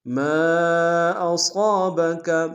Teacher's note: صاد کو موٹا ادا کریں گے، صاد کے ساتھ الف مدہ ایک الف نار میں کھینچے گی